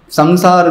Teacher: सम जो है वो नासिका से बोला है, नेशनलाइज है, अंग्रेजी में उसको कहते हैं, नासिका की ध्वनि है, तो उसके लिए संसार नहीं कहते।